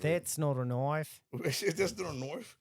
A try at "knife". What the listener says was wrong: Throwing extra sound in there for no reason. add an O in there.